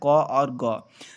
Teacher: अगर आप इनका उच्चारण करोगे तो जो आपकी वायु की मात्रा है वो बहुत कम बाहर की तरफ निकलेगी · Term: अल्पप्राण